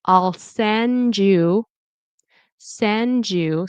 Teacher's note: so the D and the Y turn into a J sound